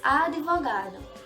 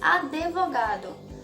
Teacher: na fala, esse encontro consonantal, ele tende a formar duas sílabas devido à colocação de uma vogal nas palavras.